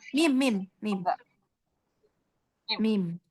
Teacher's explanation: mim itu asyafata dengan merapatkan kedua bibir dengan disertai gunah.